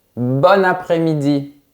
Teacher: Oui, parce que si l'adjectif bon rencontre une voyelle, on fera la liaison et on le prononcera comme son féminin bonne